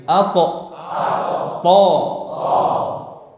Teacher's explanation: Makhrajnya sama. Ujung lidah dengan pangkal gigi seri atas.